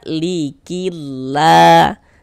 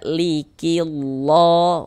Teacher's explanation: Nah, jadi kalau ada lafaz Allah sebelumnya ada harakat kasrah ya, ada baris kasrah maka lafaz Allahnya huruf lam jalalahnya tuh ini huruf yang yang di tengahnya nih huruf lamnya lafaz Allah ini kita baca tipis kita baca tarkik